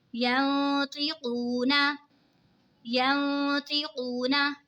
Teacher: नून साकिन के बाद हुरूफ़े इक़फ़ा का तो आ रहा है तो इक़फ़ा होगा यानी गुन्ना करके पढ़ेंगे। वाव साकिन से पहले पेश है तो वाव मद्दा होगा।